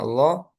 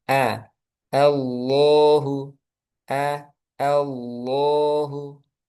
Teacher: di lafaz jalal Allah a harus dibuka fathahnya